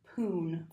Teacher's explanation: sometimes he'll say like poon or spoon and the S is deleted